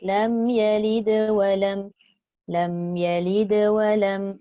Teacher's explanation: Dia jadi wasal, maka dihenjutkan sedikit. Qalqalah tetap bunyi tapi tak putus. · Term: qalqalah surah